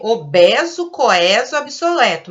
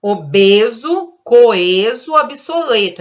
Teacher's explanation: Mas a gente fala obeso, coeso, obsoleto. A gente usa o E fechadinho. · Segundo as normas gramaticais, a gente deveria pronunciar com E aberto.